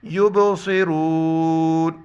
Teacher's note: سواد ہے سیٹی کی آواز، سواد پڑھیں گے، سین نہیں پڑھیں اس کو